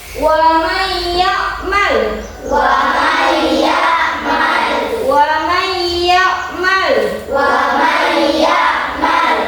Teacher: jadi didengungkan antara nun sukun dengan ya karena yang merupakan huruf idgham bi gunnah